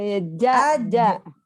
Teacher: Lidahnya nggak boleh kena gigi. Lidahnya kena tengah-tengah langit-langit justru.